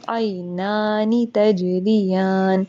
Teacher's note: آئی کو دیکھے، آئین کے اوپر زبر ہے، یا کے اوپر ساکن بنا ہوا ہے. عینانی، نون کے اوپر کھڑا زبر ہے، تو اس کو ہم 2 سیکنڈ لمبا کریں گے